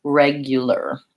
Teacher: we basically go almost directly from the L to the R in that case